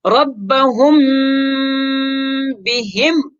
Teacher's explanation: تو میم ساکن کے بعد اگر با آ جائے اس صورت میں اخفا کر لیتے ہیں، یعنی ناک میں پڑھیں گے